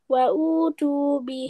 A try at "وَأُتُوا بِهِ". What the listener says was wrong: وأتوا به وأتوا not don't stretch Hamza. وأتوا two will stretch.